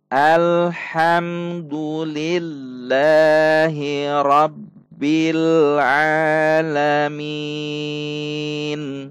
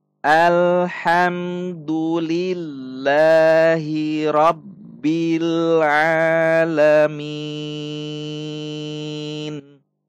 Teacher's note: enam ketuk itulah cara membaca Mad Arid lissukun